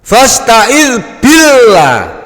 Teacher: Lam jalalah dibaca tipis.